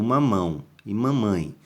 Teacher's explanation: Nesses dois casos aqui, dessa união do A e o O, A e E na mesma sílaba, nós chamamos de ditongo nasal, que é aquele som nasal, que ele sai ali o som, né, anasalado, ou seja, pelo nariz